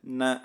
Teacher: இந்த நா வந்து மேல்வாய் பல்லின் அடிப்பகுதியில இருந்து, தொட்டு சொன்னாலே பிறக்கிறதுன்னு இருக்காங்க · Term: குண்டு நா